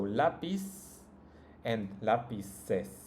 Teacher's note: In Latin America, both of these words are pronounced like an S.